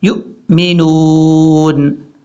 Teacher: واو ویسے لکھا ضرور جاتا ہے لیکن ساؤنڈ جو آتا ہے وہ صرف حمزہ کا ہی آتا ہے. یہ حمزہ ساکن ہے اس لیے حمزہ کو جھٹکے کے ساتھ پڑھیں گے